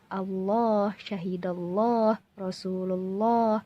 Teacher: Dan itu salah cara bacanya. Yang betul adalah tafkhim dengan kita menebalkan huruf lam.